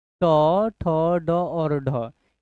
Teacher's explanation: यह कौन ध्वनि होता है? तो मूर्धन्य ध्वनि होता है।